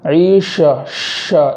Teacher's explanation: اور آگے والا کلمہ ہے عیشتن، تو یہاں شین کو خوب ظاہر کرتے ہوئے آواز کو پھیلاتے ہوئے پڑھیں گے، عیشہ اس طریقے سے پڑھیں گے۔